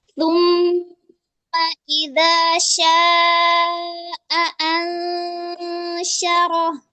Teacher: Itu pada harfu shin-nya didorong, aliran nafasnya itu. Nafas dan suaranya itu didorong karena dia mempunyai sifat tafasyi ya, aliran suaranya itu deras.